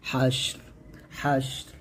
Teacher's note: তারপর মিং দিয়ারিহিম লিআউয়ালিল হাশর, এখানে একটা দেখুন অক্ষর অবস্থায় জজমুল হরফ পরের হরফ যদি আমরা অক্ষ ধরি তাহলে এখানে হাগে শিনকে ধরবে, আবার রটাকে ধরবে, এখানে রটাও সাকিন হয়ে যাবে, শিনটাও সাকিন করতে হবে, দুইটাই সাকিন এখানে